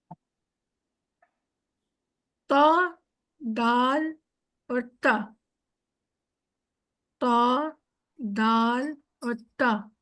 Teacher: जब हमारे ऊपर के दो दांतों की जड़ों से लगती है अंदर की तरफ दांतों की फ्रंट के दो दांतों की जड़ों से जब हमारी जबान की टिप लगती है तो वो बनता है त